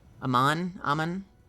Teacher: I always go for first syllable emphasis.